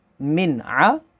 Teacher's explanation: अब यहाँ पर भी नून साकिन के बाद आगे अगला लेटर जो है वो आइन है, आइन हरूफ़ हलकी है तो यहाँ पर इज़हार होगा।